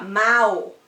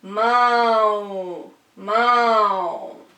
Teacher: Então, mão é um som nasal. Sai pelo nariz esse som